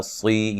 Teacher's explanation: وقف کی صورت میں را کو باریک پڑھنا ہے · صاد کو موٹا ادا کرنا ہے